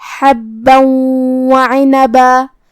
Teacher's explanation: ہم یہ تنوین کو واو میں ملا کے غنہ اور تشدید کے ساتھ یہ حکم کو ادا کریں گے · حرف الحا کو ہم حلق کے درمیان والے حصے سے ادا کریں گے · با پہ تشدید ہے تو دو حرف کے برابر ہمیں حرف البا کو پڑھنا ہے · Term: ادغام